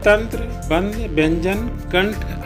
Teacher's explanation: अनुस्वार का उच्चारण हम नाक से करते हैं।